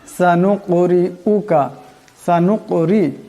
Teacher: এখানে বড় কাফ সাকিন, আওয়াজটা গলা থেকে আনতে হবে এবং এটি কলকলা হরফ, আওয়াজের সাথে টক্কর খাবে।